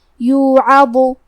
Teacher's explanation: کلمت یوعظ میں عین پہ زبر ہے تو ہمیں زبر کو ظاہر کرنا ہے، اور حرف الضو کی ادائیگی زبان کے سر اور اوپر والے دانتوں کے اندرونی کناروں سے ہے۔ کیونکہ ضو حروف تفخیم میں سے ہے تو ہم یہ حرف کو بھاری آواز میں پڑھیں گے